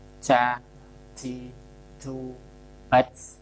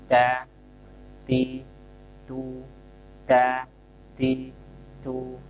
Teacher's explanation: Jadi saat diucapkan ada nafas terdengar, tapi tidak berlebihan. Da, ti, tu, da, ti, tu, nafasnya dialirkan.